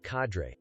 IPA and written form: ˈkædreɪ (cadre)